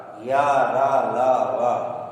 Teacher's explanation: और ये 4 जो नीचे दिया हुआ है, य, र, ल, व, यह अंतस्थ व्यंजन है। अंतस्थ व्यंजन यह जब उच्चरित होता है तो किसी भी अंग का स्पर्श नहीं करता, या, र, ल, व, इसीलिए इसको अंतस्थ कहते हैं।